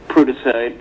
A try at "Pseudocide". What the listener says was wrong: No, Pseudocide. Nope, the P is silent, like in pneumonia and pseudonym. Pseudocide.